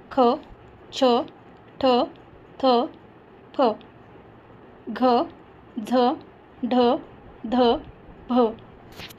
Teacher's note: महाप्राण या व्यंजनाचा उच्चार करताना फुफ्फुसातील हवा मुखाद्वारे जोरात बाहेर फेकली जाते.